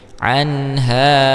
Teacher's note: huruf nun bertemu dengan ha, baru disebut dengan izhar halqi karena huruf ha termasuk ke dalam makhraj al-halqu. Anha, hanya mad tabi'i karena alif sebelumnya fathah.